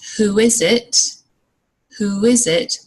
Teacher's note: There is no break between the words. And you can hear a little w sound between who and is.